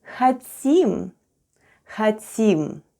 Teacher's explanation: And all together we have хотим, with the stress on the last syllable.